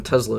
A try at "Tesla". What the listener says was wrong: it's not a Z in the middle. It's an S.